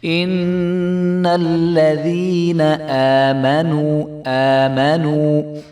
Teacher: میم کے اوپر زبر ہے تو ہم میم کو نہیں کھینچیں گے